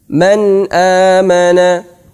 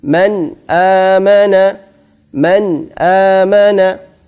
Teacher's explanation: Izhar artinya jelas. Maka bacaan nun sukun harus jelas. Jelas artinya tanpa ada dengungan sama sekali. Tidak dimasukkan kemana-mana.